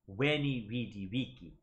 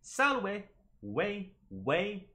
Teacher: The issue is with the letter V. In classical Latin, V makes a W sound.